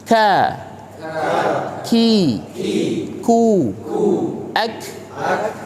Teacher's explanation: huruf Kaf ini seperti Huruf ka yang kita biasa kenal namun bedanya itu adalah dia dialirkan nafas tatkala pengucapannya